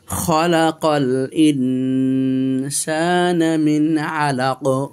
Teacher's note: এখানে আছে ইখফা, কারণ নুন সাকিনের পরে সিন এসেছে ইখফার হরফ, এই জন্য আমরা ইখফা করতেছি, অর্থাৎ নুনটাকে অস্পষ্ট করতেছি। আর ইখফা করার পূর্ব শর্ত হলো গুন্না করা, নাকে পড়াকে বলা